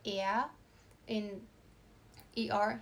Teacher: sometimes the R tends to become like an aw kind of sound in German